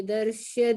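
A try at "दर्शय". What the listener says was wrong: Darshaya, full year is there.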